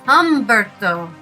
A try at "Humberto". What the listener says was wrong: The H is not pronounced.